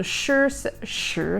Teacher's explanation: and that brings us to the third tone sang shil so the third tone dips in the middle so it falls and rises